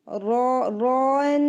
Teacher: रॉ इसको heavy रखेंगे, रॉ रॉन और फिर नून लाइट